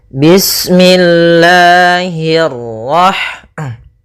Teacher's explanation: Allah itu ada mad tabi'i pada lafal la-nya. Nah, di sini kita panjangkan 2 harakat.